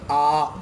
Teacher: ऐसा लगता है जैसे पूरा खुला गया हो बोलकर देखिए ए ऐसा लगेगा जैसे पूरा मुंह चौड़ा हो गया वो खुला गया हो